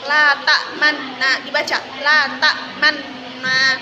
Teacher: 2 ismam artinya memoncongkan bibir atau mencampurkan dhamma pada sukun dengan memoncongkan bibir atau mengangkat kedua bibir